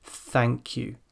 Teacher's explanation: the tongue is far out, it's clamped between teeth, and the breath is coming through the teeth. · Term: unvoiced th sound